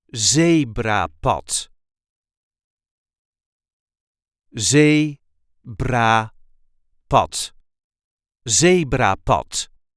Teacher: There is a light emphasis on the first syllable.